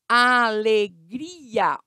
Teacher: Alegria tem 2 vogais juntas, mas elas ficam em sílabas separadas. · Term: hiato